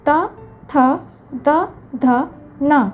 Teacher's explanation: ଏମାନେ ଦନ୍ତରୁ ଉଚ୍ଚାରିତ ହେଉଥିବାରୁ ଦନ୍ତ୍ୟ ବର୍ଣ୍ଣ କହନ୍ତି।